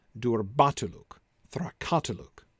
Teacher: look is stressed in both of them and the root word durb and thrach are not stressed